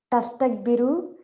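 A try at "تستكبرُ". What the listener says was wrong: So you have to start with U, right? U-a. So you can't change these two harakat throughout.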